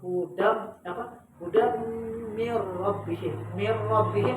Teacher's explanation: asal kalimatnya hudan, tapi ketika kita membaca bukan hudan, menjadi hudam mir rabbihim